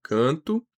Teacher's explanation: Essas letras MN não vão funcionar como consoantes normais, elas funcionam como um sinal para tornar a vogal anterior nasal. Então a gente tem canto é um a nasalizado